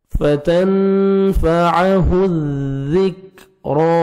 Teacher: فتنفعہ الذکرا, را کو عمر کھڑا زبر ہے, را کو آپ نے موٹا کرنا ہے اور 1 سیکنڈ کھینچنا ہے